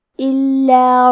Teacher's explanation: کلمت الا میں حرف اللام پہ تشدید ہے تو ہم دو حرف کے برابر لام کو پڑھیں گے